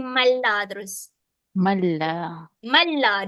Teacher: Malla, dia terus masuk pada huruf lam. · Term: idgham